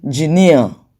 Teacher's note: the stress syllable there is near